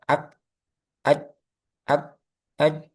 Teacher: Jim ya. Kemudian kaf ini punya sifat syiddah yaitu macet ak ak ak ak.